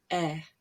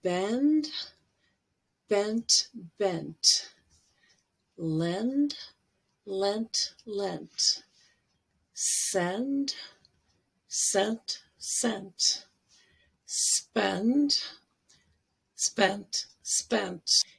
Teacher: it's with the tongue in the front but kind of center not high not low and you kind of need to smile a little bit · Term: red vowel